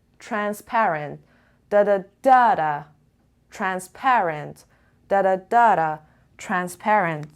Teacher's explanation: The stress is on the transparent on the second syllable.